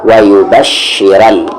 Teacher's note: را کو یہاں پر موٹی آواز سے پڑھیں گے کیونکہ را پہ زبر ہے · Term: ہیوی